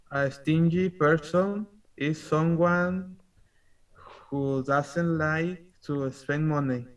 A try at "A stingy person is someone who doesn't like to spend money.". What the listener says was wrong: Observe. It's not I. Not I. It's a. A stingy person is someone. Someone who doesn't. You said assassin. Google Translate recognized that this was assassin. No. Doesn't like to spend money. Remember, this is a stingy. A stingy person is someone who doesn't like. Someone who, this here is who doesn't like to spend money.